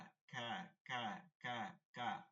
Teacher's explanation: কাফটা হচ্ছে হালকা আওয়াজে, পাশাপাশি হামস রাখতে পারলে ভালো।